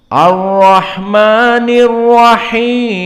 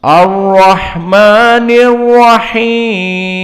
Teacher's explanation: Maka alif lamnya asy-syamsiyah masuk kepada ra al-mufakhamah.